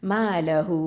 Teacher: 4 இல்லைனா 5 அலிஃப் நீட்டி ஓதணும். மலஹூ அப்படின்னு நீட்டணும். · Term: மத்து சிலத்துல் குபுரா